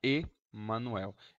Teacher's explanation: esse E está antes do M, então está Emanuel. Ele não pegou o som nasal.